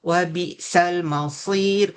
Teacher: kena tebalkan bunyi sad, kalau tak tertukar dengan bunyi sin